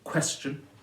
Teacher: stressed on the first syllable, question, so the shun is unstressed, that's an unstressed syllable added to the end, and it doesn't matter, it's fine.